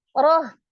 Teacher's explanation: roh fathah dibaca tafkhim, tebal.